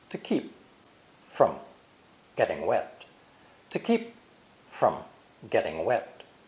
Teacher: keep and wet are the two words emphasized in this part two from and getting are unstressed the words to and from · words emphasized in this part two from and getting are unstressed the words to and from both have the unclear schwa vowel